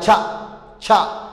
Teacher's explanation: phonetic symbolkiisuna labadan uu ka kooban yahay waa t iyo sha la isku daray